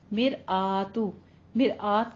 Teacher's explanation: मिर रॉ मुरक्कक है हमारी, रॉ बारीक पढ़ेंगे। मिर आ हमजा के ऊपर फतह कायमा है, अलग से इसको मुंह खोल के पढ़ना है।